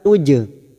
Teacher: Jim sukun qalqalah sugro karena mati asli di tengah kalimat jangan lupa dipantulkan